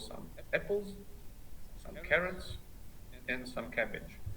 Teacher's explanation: it has this falling tone in the end with apples carrots and cabbage